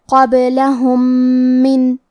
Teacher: یہاں حکم ہے ادغام متماثلین صغیر، اور ادغام کا معنی ہے حرف کو حرف میں داخل کرنا، تو ہم پہلے میم کو دوسرے میم میں ملا کے ایک ہی میم غنہ اور تشدید کے ساتھ پڑھیں گے